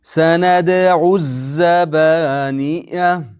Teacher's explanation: Mana bu hamza va alif o'qilmay qoladi. Chunki shamsiya